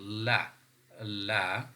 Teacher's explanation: The tip of the tongue is firmly touching the hard palate, but the air is coming out from the two sides without any friction or without any obstruction. So the air is coming out continuously. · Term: partial closure